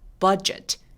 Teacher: 버짓 아니고 입술이 내밀어줘야 되니까요.